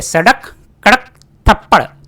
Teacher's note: अब है उत्क्षिप्त जिन व्यंजन के उच्चारण में फेंका हुआ जीभ का अग्र भाग मूर्धा को स्पर्श करके झटके से नीचे आ जाता है